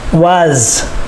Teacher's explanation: Notice the S makes the Z sound.